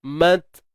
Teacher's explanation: huruf ta tahan suara dulu, mat, kemudian baru lepaskan nafas